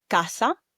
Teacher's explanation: In Spanish, the A is pronounced as a clear open A sound. So it would be ah similar to how you would say for example father in English.